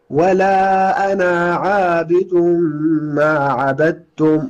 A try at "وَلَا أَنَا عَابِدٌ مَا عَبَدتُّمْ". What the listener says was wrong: لا ، الألف لا تنطق. ولا أنا شوف الفتحة اللي على النون، هذه الفتحة. ولا أنا عابد ما عبدتم، مش ولا أنا عابد. لا، حاول تقلل في الألف قليلا.